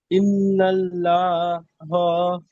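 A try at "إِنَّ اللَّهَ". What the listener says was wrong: লা হয়ে যাচ্ছে, এখানে ল হবে, ইন্নাল্লাহ।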